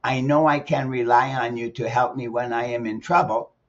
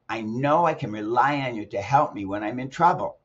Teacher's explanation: if you stress know and rely and help and trouble, you'll sound like this.